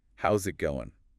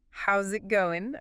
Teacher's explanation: that final G often gets dropped or is really soft